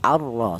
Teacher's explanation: huruf ra yang berharakat fathah ini menggunakan lidah bagian belakang diangkat ke atas ya arro seperti itu. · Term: tafhim